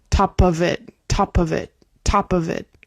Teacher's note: the of in that case sounds just like a V sound. Top of it. Top of it. Top of it. It's like a voiced F.